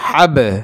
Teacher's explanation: পাঁচটি কফ ত বা জিম দাল এই পাঁচ হরফের জজ হইলে কলকলা করিয়া পড়তে হবে অর্থাৎ ধাক্কা মারতে হবে